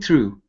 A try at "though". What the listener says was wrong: Now that last word is pronounced though. Instead of through, there isn't an R there, so it's though.